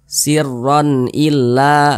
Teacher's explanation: Nah ronnya itu kita baca jelas sirron jelas kemudian tidak berdengung karena dia tidak berdengung pendek saja kita baca sirron illa begitu Jangan dibaca sirron illa jangan dipanjangkan seperti itu jangan pendek saja · tanda baca tanwin berjumpa dengan huruf hamzah hukumnya izhar halqi karena dia izhar maka dibaca jelas tidak berdengung Nah ronnya itu kita baca jelas sirron jelas kemudian tidak berdengung